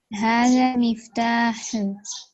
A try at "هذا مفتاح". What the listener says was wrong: مفتاح. اب ہاں پہ کلکلا نہیں ہے. مفتاح. ھذا مفتاح.